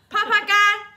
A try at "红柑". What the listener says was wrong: 红 干 不 是 啪 啪 干 。